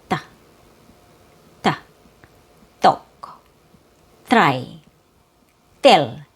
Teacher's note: I make my T by placing the tip of the tongue between my teeth.